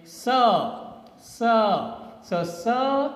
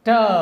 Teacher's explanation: t is done with a complete blockage with your tongue touching your ridge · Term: stop consonant